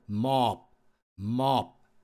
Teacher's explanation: 그냥 B 소리가 안 들립니다 묻어가 버립니다